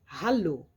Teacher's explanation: La lettre H, c'est un H, donc elle est très aspirée